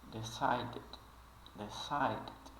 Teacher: ele mal pronuncia esse D final mas ele realmente ele de fato tá ali ele só não é muito pronunciado